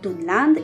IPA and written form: dunland (dunland)